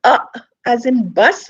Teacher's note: uh as in bus is a central vowel